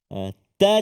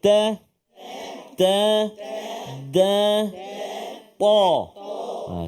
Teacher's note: hujung lidah kena pengikat gigi bahagian atas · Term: huruf ta